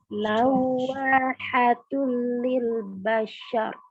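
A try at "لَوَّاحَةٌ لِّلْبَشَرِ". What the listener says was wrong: Nah, setiap mau baca shin itu mesti jadi agak monyong mulutnya. Bashar. Tapi huruf shin tidak boleh tebal. Ini huruf shin ini problemnya nih. Ya, tapi sekarang kita belum belajar sampai situ, tapi shin adalah salah satu huruf istifal. Jadi mulutnya tuh basya, bukan sya.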